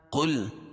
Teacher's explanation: قاف کو موٹا پڑھیں گے، حروف مستعلیہ میں سے